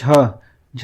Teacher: झ क्या है, तालव्य है। यहाँ पे देखिए तालव्य है, और कह सकते हैं कौन सा है, सघोष भी है, सघोष है और महाप्राण भी है।